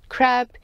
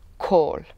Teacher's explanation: it is important to notice that in the word crab is not aspirated as it is in the word call